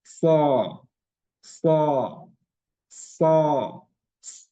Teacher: Pertama, dia al-hamas. Jadi angin itu berhembus, baik ketika akan ataupun ketika sudah mengucapkannya.